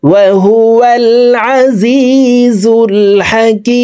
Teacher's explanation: তিন আলিফ টেনে মিমকে সাকিন করে ফেলবো, কারণ মদরা হরফের বামের হরফে ওয়াকফ হইলে মুদ্দা আরজি তিন আলিফ টানিয়া পড়িতে হয়।